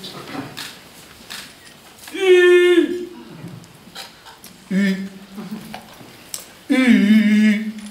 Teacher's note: U se forme en rapprochant les dents presque entièrement. Les deux lèvres s'allongeant au dehors, se rapprochant sans se joindre tout à fait.